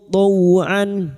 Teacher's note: taw fathah bertemu sukun kita lunakkan huruf lin. Taw'an, huruf ain wastul halqi atau tengah tenggorokan, jangan samakan dengan hamzah.